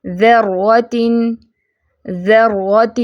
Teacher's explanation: را پہ تشدید ہے تو اس میں کیا ہے، ڈبل ریپیٹیشن ہوگی